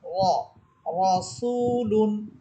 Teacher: এরপরে শব্দ র সবর র, সিন ওয়াও পেশ সু, রসু, লাম দুই পেশ লুন, রসুলুন। র মোটা করে পড়বেন, আকার ছাড়া পড়বেন, মুখ ভরে উচ্চারণ করবেন। র, রসুলুন। এখানে দেখেন অনেকেই বলে রাসুল, এটা রাসুল শব্দ হবে না, শব্দটা হবে রসুল।